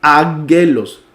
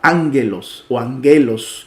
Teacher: El sonido de la primera gamma se cambia por una N, a la N de nené.